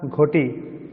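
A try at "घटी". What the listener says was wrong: না ঘটি না, ঘটি ঘয় ওকার নেই তো। এষা ঘটি, হ্যাঁ ঘয় ওকার তো নেই, ঘটি তো নেই, ঘটি।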